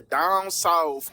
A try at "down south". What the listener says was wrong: with an F, not down SOUTH, down south SOUF.